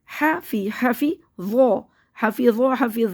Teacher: دانتوں سے زبان باہر آنی چاہیے، اور اس میں بھی زبان دانتوں سے باہر ہی رہے گی.